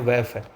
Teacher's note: उच्चारण करते समय नीचे का होठ ऊपर वाले दांतों को स्पर्श करता है, ऐसे वर्णों को दंतोष्ठ कहते हैं। देखो सुनो क्या बोल रहा है, नीचे वाला होठ ऊपर वाले दांतों को टच करता है।